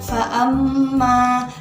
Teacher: Di situ ada kata fa'amma, mim yang bertasydid. Ketika kita membacanya maka harus disertai dengan dengung.